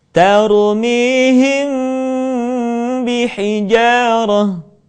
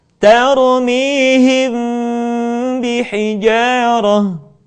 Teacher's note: Mimati ketika bertemu dengan huruf ba, bibir tidak sempurna rapat, melainkan agak direnggangkan sedikit.